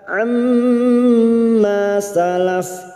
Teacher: ma fathah diikuti alif 2 harakat mad tabi'i